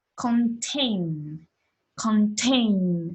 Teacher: The stress will be on the second syllable as well.